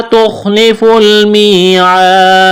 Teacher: تخلف المیعاد یہاں یا مدہ ہے تو ایک الف کے برابر کھینچنا ہے، الف مدہ ہے کھینچنا ہے ایک الف کے برابر. یہاں جب وقف کریں گے اس آیت پر تو دال کو ساکن کرنا ہے، دال پر قلقلہ کریں گے